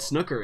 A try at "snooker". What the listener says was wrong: It's snooker. It's not snooker. It's snooker. It's two O's, not a U.